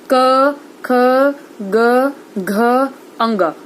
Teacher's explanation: हमारी जो जीभ है वो कहीं से भी नहीं टकराती है। ठीक है, वो एक ही जगह रहती है और आवाज कहाँ से आती है? हमारे गले से आती है, मतलब हमारे कंठ से आती है। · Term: कंठ वर्ण